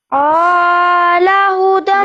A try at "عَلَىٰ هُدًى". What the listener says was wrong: عین کو تو لمبا نہیں کرنا نا بیٹے، عین کی تو زبر ہے، صرف لام کی کھڑی زبر ہے. علی ہدی من ربہم.